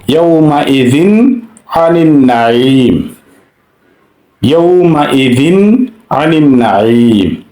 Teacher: এখানে ইয়াউমা ইযিন, ইয়া ওয়া জবর ইয়াউ, মিম জবর মা, হামজা জের ই, জাল দুই জের জিন, জাল দুই জের জিন হচ্ছে তানবিন। তানবিনের পরে আইন আসছে, এখানে উচ্চারণ করতে হবে ইজহার করে